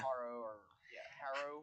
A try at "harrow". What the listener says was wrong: Harrow. Don't pronounce it as R. Pronounce it as ah. Harrow.